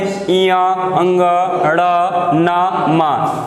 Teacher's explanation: इया अंग ड़ न म, इनका उच्चारण स्थान किससे होता है नासिका से